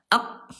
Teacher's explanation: Huruf kaf ayah bunda dia syiddah dia kuat ayah bunda sekalian ya. Suaranya tertahan ketika lagi sukun ya.